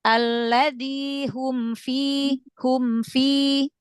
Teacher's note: mim sukun pada sukun idhar berarti idhar syafawi ya. Jangan terlalu panjang ditahan gunanya. Cukup tingkat bainnya aja.